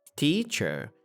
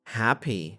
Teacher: Two-syllable nouns, teacher, and an adjective, happy, stress the first.